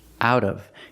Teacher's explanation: The T changes to a fast D.